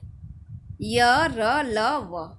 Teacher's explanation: तो अंतःस्थ व्यंजन उन्हें कहते हैं जिन व्यंजनों का उच्चारण स्वरों और व्यंजनों के मध्य का होता है। ठीक है, ना तो उनका उच्चारण स्वर की तरह स्वतंत्र रूप से किया जाता है और ना ही तो व्यंजनों की तरह पूरी तरह से रुकावट के साथ किया जाता है।